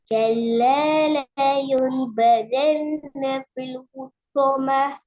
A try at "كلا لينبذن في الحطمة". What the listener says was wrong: இல் என்ற சவுண்ட் எடுக்கணும்.